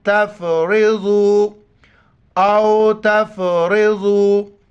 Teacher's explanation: ضاد کے ادا کرنے کے لیے ہے کہ زبان اوپر کے داڑھ کے رائٹ سائڈ پر ٹچ ہو جائے، ضاد موٹے الفاظ میں موٹا کر کے پڑھیں گے اور واو کے ساتھ ملائیں گے۔